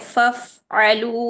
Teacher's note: فف آواز ختم کریں پھر عین پر چلیں، ہلکا سا لائٹ سا اس کو پوز دیں